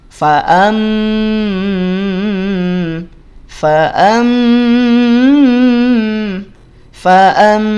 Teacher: samar dengung tahan dua harakat hukumnya ikqlab gantikan bunyi nun sukun gantikan bunyi nun sukun atau tanwin jadi bunyi M atau jadi bunyi mim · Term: iqlab